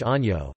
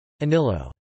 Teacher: Spanish is marked by the palatalization of the Latin double consonants nn and ll